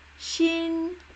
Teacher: High again, high and flat